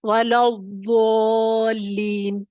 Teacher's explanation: جو زبان کا حافہ ہے وہ داڑوں سے لگتا ہے اور پھر اس کے اندر وہ طوالت، اس آواز میں تھوڑی سی درازی پیدا ہو جاتی ہے باقی حروف کی نسبت. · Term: استطالت